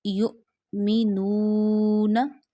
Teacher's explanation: We have to stretch nu because of waw madda. When waw becomes sakin and before waw sakina pesh comes at the previous letter, then you stretch waw up to one finger, one alif.